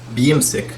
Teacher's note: So what's going on here is that the Fusha verb would have been yamsik, but here the ya has the kasra, so it's kind of a double I sound because the ya becomes yi